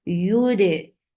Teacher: You are lifting your tongue up to touch the palate, but you are not touching it. That is making ya very soft letter.